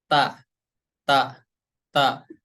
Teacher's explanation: tempat keluarnya dari ujung lidah kita menempel ke, maaf ya, menempel ke tempat tumbuh gigi seri yang atas. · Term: huruf ta